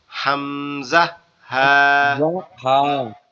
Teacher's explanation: হলকের শুরু হইতে বা কণ্ঠনালীর শুরু হইতে হামজা হা